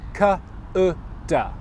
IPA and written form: k ʊ d (could)